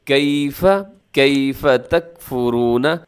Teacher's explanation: یا ساکن سے پہلے جب زبر ہوتی ہے تو یا لین ہوتا ہے. اس کو آپ نرمی کے ساتھ بغیر مجہول پڑھے